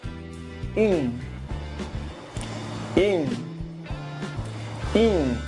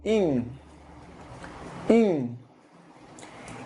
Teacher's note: Es como si quisieras decir in, pero la boca la haces como una U.